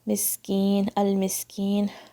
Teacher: میم کے نیچے کسرہ ہے, سین پہ سکون ہے, سین کو شیک نہیں ہونے دیجیے گا, صفیر کی ساؤنڈ آنی چاہیے اس میں, کلیئرلی پڑھنا ہے آپ نے سین.